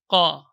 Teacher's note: Qa, huruf syiddah kemudian jahar. Jadi tertahan suara dan udara. Jadi tidak ada udara yang mengalir ketika pengucapan huruf qaf. Dan dia termasuk huruf isti'la, yaitu huruf irtifa, yaitu terangkat suara ke langit-langit atas, huruf tebal.